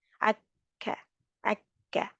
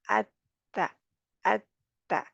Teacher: दोनों में हवा को पहले रोकते हैं, यानी फिर हल्का-सा वक़्फ़ा लेकर हवा को बाहर निकालते हैं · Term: हम्स